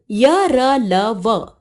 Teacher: जिन व्यंजनों को बोलते समय जीभ मुख के किसी भी भाग को पूरी तरह स्पर्श नहीं करती उन्हें अंतस्थ व्यंजन कहते हैं